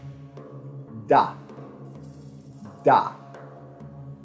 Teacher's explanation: a voiced alveolar plosive, and it is produced by placing the tip or the blade of the tongue at the alveolar ridge.